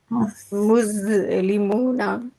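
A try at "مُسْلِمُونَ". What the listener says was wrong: আপনি আপনি জ বলার চেষ্টা করছেন, আপনি দ বলার চেষ্টা করেন, দাদা, দাদা বলার চেষ্টা।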